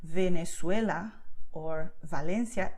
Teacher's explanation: there is a tendency of pronouncing this letter UVE as v, like in English when you say vacation